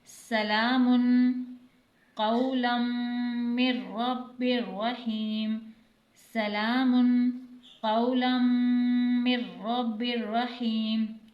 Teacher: اب یہاں پر دو زبر کی تنوین کے بعد حروف یرملون میں سے میم مشدد آ رہا ہے تو یہاں پر ہم ادغام کے ساتھ غنہ کریں گے۔